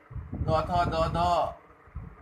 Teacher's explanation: दांत से द थ द ध ल और दंत स का उच्चारण होता है।